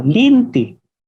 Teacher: en la lengua bicol se conserva la práctica de pronunciar la E como la I. Por ejemplo, la palabra lente se puede escuchar como linti.